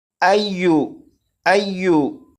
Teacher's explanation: یا کے اوپر تشدید ہے، تو اس یا کو اس طرح نہیں پڑھیں گے ایجو ایجو ایجو، بلکہ یا کو نرمی سے پڑھیں گے، جیسے ایو ایو۔